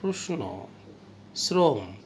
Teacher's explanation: তারপরে দেখো যে তলবস্য দন্তন্য কিংবা রয়ের সাথে উচ্চারিত হবে, ইংরেজি এস এর মতো হবে।